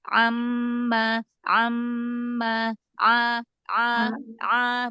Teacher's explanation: Huruf ainnya dibuka lagi biar jangan kayak Hamzah.